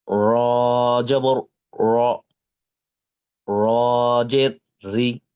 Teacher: জবরে আকার পড়া যাবে না, অর্থাৎ র জবর রা পড়া যাবে না, পড়তে হবে র জবর র।